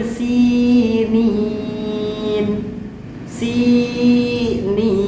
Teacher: huruf sin harokat kasroh bertemu dengan huruf ya mati, maka itu harus dipanjangkan